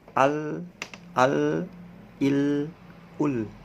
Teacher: Lam itu ada di dalam gigi ya, di dalam gigi di depan ini. Ujung lidahnya tempel ke dalam di atas di dalam gigi, jadi tidak keluar. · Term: huruf lam